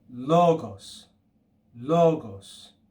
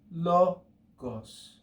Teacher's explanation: if you just want to use stress accent as we do in english you could just say logos logos but the pitch accent would sound lo gos okay that's an acute accent the mark goes up from left